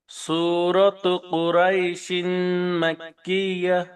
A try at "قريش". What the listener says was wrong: কুরাই না কুরই রপুর হবে, হ্যাঁ, রর উপরে জবর